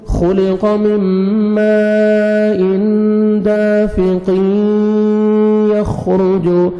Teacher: تنوین کے بعد دیکھیں حروف یرملون میں سے یا ہے تو ہم نے یہاں پہ ادغام کرنا ہے غنہ کے ساتھ